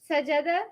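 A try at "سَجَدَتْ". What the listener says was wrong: No, there's no shadda. it's not sajja. It's not sajja. It's sajadat.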